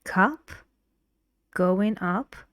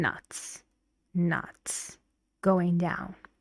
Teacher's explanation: Cup, going up, your voice goes up, and nuts, nuts, going down.